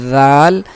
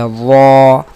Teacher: ذال ان دونوں میں کوئی فرق بھی نہیں ہو گیا، بلکہ ان کے فرق کو واضح کرنے کے لیے ضروری ہے کہ ذال کو ہم باریک پڑھیں گے ذال، اور وا کو ہم پر پڑھیں گے